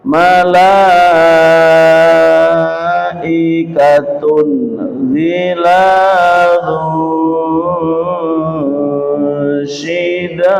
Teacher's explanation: kasrotan bertemu dengan shin dibaca dengung dengan lama